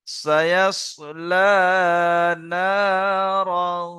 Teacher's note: এক আলিফ পরিমাণ নাকে তুলে গুণনা করে পড়তে হবে